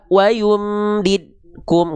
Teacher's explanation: Enggak ada qalqalahnya sama sekali.